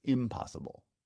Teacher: when we want to emphasize the contrast between possible and impossible that shifts the focus to the prefix m that's not word stress that's accent on top of the